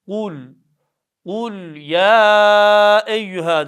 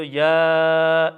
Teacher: Dört elif miktarı uzatıyoruz. Ses e'ye doğru gidiyor. Ya şeklinde. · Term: meddi münfasıl